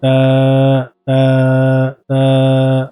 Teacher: জিহ্বার আগা সামনের উপরে দুই দাঁতের গোড়ার সঙ্গে লাগিয়ে